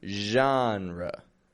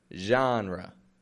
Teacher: Now that word genre, spelled with G-E-N-R-E, but it maintains the French zh kind of sound in the beginning. I'm not saying genre or genre, but genre.